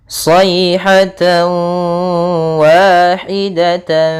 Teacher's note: tanwin bertemu dengan huruf wau cara membacanya adalah tanwinnya kita masukkan kepada huruf wau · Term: idamunah, idgham